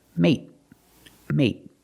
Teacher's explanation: With mate, we end with a T, so it's a stop T. Mate, stop the air.